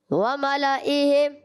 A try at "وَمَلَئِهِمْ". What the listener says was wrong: سبحان اللہ.